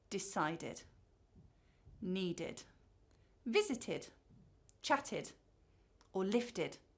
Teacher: And then we have /id/. So these are infinitives that end in /t/, or /d/.